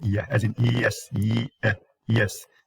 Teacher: So yeah is a voiced palatal glide.